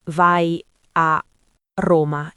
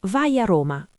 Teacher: non diciamo vai a Roma in modo staccato, diciamo vai a Roma, quasi come fosse una parola sola. Questa si chiama liaison ed è uno degli elementi che rende il parlato naturale.